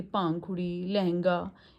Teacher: इसमें हवा नाक व मुख दोनों से निकलती है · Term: अनुनासिक